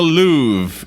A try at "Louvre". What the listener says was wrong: Louvre with a V. Louvre, not Louvre.